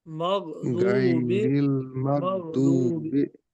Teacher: गईन पे कलकला नहीं है। गईन की आवाज ठहराइए, रोकिए।